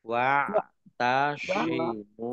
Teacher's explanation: mim domah wawu sukun mat tobi'i panjang 2 harokat